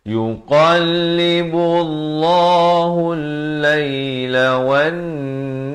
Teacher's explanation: lafaz jalalah dibaca tebal. Kalau tadi dalam isti'adzah kita baca nipis, di sini dibaca tebal dua harakat.